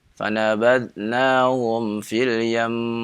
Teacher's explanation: mim bertasydid, nun bertasydid yang disebut gunnah musyaddah, apabila dibaca di akhir maka ditahan gunnahnya dengan tasydid tersebut 2 harokat